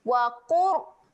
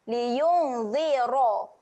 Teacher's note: Huruf ra di sini adalah tebal keadaannya. Jadi kena muncung sikit.